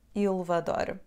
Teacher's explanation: a letra E na palavra elevador vai cair